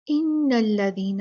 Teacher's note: نون مشددہ، اس کو اس کا حق دینا ہے، اچھے سے اس کا غنہ پڑھنا ہے، بہت جلدی آگے نہیں بھاگنا